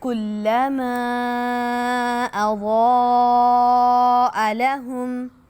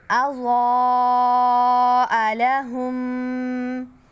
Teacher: اب اضاء ضاد موٹا حروف ہے، اس کو جو ہے وہ ہم ادا کریں گے، اور اوپر مد آ گیا۔ اب مد کو 4 سے 5 الف کے برابر لمبا کرنا ہے۔